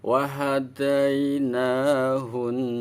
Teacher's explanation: Ketika ada nun bertasdid, hukum bacanya ghunah musadadah. Ghunah musadadah, ghunah itu suara yang keluar dari hidung musadadah, dan banget dengunge.